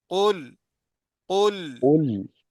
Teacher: काफ को तो मोटा करना है लेकिन लाम को मोटा नहीं करना